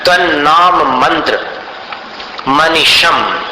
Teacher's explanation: अनुस्वार का उच्चारण म जैसा क्योंकि आगे भी म है